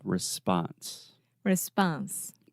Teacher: in the word response in American English the second sound is the ah response response precisely so you are responding to the question obviously